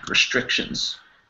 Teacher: the e sound there is more of a schwa